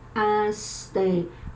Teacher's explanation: É uma palavra paroxítona, cuja sílaba mais forte é a penúltima, asteroide.